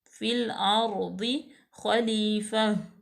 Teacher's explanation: فل لام لام تعریف، الف لام کو ظاہر کیا. را جو ہے وہ ساکن ہے تو را پر پڑی جائے گی. ضاد حروف مستعلیہ میں سے ہے تو پر پڑا جائے گا. · ضاد حروف مستعلیہ میں سے ہے تو پر پڑا جائے گا. اور خا جو ہے وہ بھی حروف مستعلیہ میں سے ہے تو یہ بھی پر پڑا جائے گا، یعنی کہ موٹا